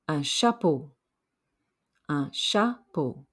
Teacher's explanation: Remember the French do not say CH the way we do in English. It gets a soft SH sound.